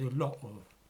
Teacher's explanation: she tends rather to use glottal stops into the terminal t's